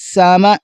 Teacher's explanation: سین کو سیٹی کی طرح نکالا جاتا ہے